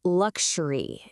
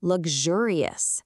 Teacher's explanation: It's got that hard K sound. But when it turns into an adjective, the sound completely flips to a softer G sound, luxurious.